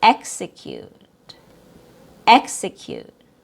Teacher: EX is pronounced with a short E sound plus KS, X, and it's a stressed syllable